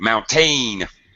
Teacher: Spanish speakers and Portuguese speakers tend to really stress the second syllable of this word it's really in English it should be very unstressed should be